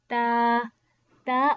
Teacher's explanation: Ta originate with the tip of the tongue touching the gums of the upper two front teeth